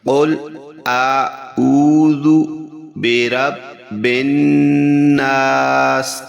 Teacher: آخر میں ہم نے بالناس سین کی زیر نہیں پڑھی کیونکہ یہاں پہ وقف آ چکا ہے۔ جہاں وقف آتا ہے تو آخری حرف کی جو حرکات ہوتی ہے وہ ساکن ہو جاتی ہیں، یعنی وہ خاموش ہو جاتی ہیں، اس کو نہیں پڑھا جاتا۔